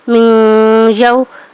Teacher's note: نون ساکن کے بعد یا حروف یرملون میں سے ہے، ٹھیک ہے، اس کو بھی غنے کے ساتھ پڑھیں گے۔